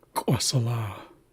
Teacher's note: Up next is an ejective rounded Q